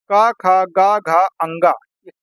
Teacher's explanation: क ख ग घ अंग कंठ से बोले जा रहे हैं